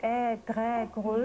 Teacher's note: Diese Gurrlaute werden tief in der Kehle erzeugt. Sie klingen wie Ä, Grä, Grüll und bestehen meistens aus Konsonanten und Vokalen.